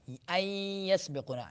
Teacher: آ رہا ہے، ان یسبقون، یہ ادغام کیسے کرنا ہے کہ نون کی آواز کو یا کے اندر داخل کر دینا ہے ، ادغام کر دینا ہے، چھپا دینا ہے، اندر کر دینا،